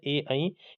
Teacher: ए ऐ कंठ और तालु की मदद से बोले जाते हैं।